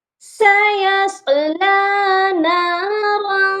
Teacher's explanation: سیصلی نارا، سیصلی کے صاد کو موٹا پڑھا جائے گا کیونکہ یہ حروف مستعلیہ ہے، اور نارا را پر تنوین ہے تو اس پر ہم نے اخفا کرنا ہے اور را کو موٹا بھی پڑھا جائے گا